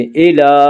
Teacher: ومتاع الی، ومتاع الی، لام کے اوپر کھڑا زبر ہے، کھڑا زبر کو ایک الف کے برابر کھینچ کر پڑھیں گے